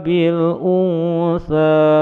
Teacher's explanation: Bacaan ihfa un menjadi un, mendengung samar menuju pada huruf tha di depannya, panjang dua ketukan.